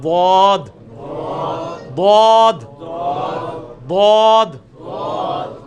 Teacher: زبان کی لیفٹ والے کنارے کو اوپر کی دانتوں کی جڑ میں اس طرف, تو بہت آسانی سے نکلتا ہے ضاد